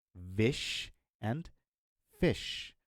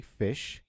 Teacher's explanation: When you say fish, your vocal cords will not vibrate. When you say vish, your vocal cords will vibrate.